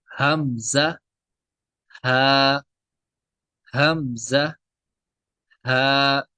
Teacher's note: حلق کے نیچے والے حصے سے ادا ہوتے ہیں حمزہ اور ہا